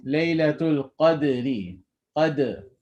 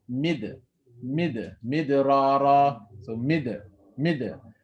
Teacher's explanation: your tongue is simply going to tap the roots of your upper teeth to pronounce the dal